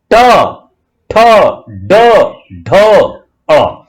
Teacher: जीभ का मूर्धन्य का मतलब होता है जीभ का ऊपर उठना, उठती है और तालु से टच करती है और हवा का प्रेशर उसको खोलता है, तब ये अक्षर, मतलब मुंह के अंदर जो आवाजें हैं, जो ध्वनि हैं, जो स्वर हैं, उनको पूरी तरह हिंदी भाषा बांधती है, सिखाती है।